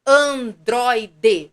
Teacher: a minha sílaba mais forte é a penúltima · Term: paroxítona